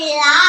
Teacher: இதை ஏன் சிறப்பு லகரம் சொல்றேன்னா, இது நல்லா நாக்க மடிச்சு லா அப்படின்னு சொல்றதுனால இதை சிறப்பு லகரம் சொல்றோம்